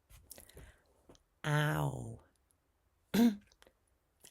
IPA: aʊ